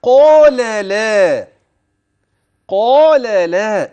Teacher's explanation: اذا القاف مفخمه اللام ترقق والالف الالف ال بعد القاف تابع لها ولكن اللام ترقق قال